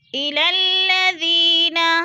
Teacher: ساکن سے پہلے ذال کے نیچے زیر ہے تو یا مدہ، یا مدہ کو ہم نے 1 الف 2 حرکات کے برابر لمبا کر کے پڑھنا ہے